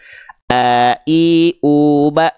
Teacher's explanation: Hamzah dilafalkan dari pangkal tenggorokan dengan kondisi pita suara yang menutup